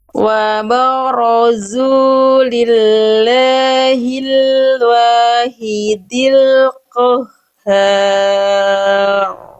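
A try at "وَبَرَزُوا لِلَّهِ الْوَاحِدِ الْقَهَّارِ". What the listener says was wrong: Bunda menebalkan roknya, tapi jangan sampai mengorbankan keutuhan tipis dari ba. Ba itu tipis atau tebal? Tipis. Berarti mana ba yang tepat? Yang A atau yang B? Yang A. Wabarazu. Yang B wabarazu. Mana ba yang lebih tepat?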